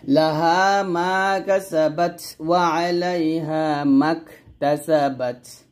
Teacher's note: মাক, এখানে কাফটা বাতাস খাবেন